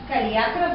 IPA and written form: kɐlˈiakrɐ (Kaliakra)